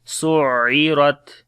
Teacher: Ra we read in heavy sound, on the Ta we make Shiddat and Hams quality.